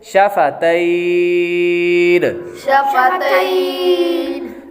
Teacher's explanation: اب حروف لین کے بعد عارضی سکون ہے یعنی نون ساکن جو ہو رہا ہے وہ اس وجہ سے ہو رہا ہے کیونکہ آخر میں وقف آ رہا ہے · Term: مد لین عارض